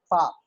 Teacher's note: जो लिप्स हैं वो दांतों से लगते हैं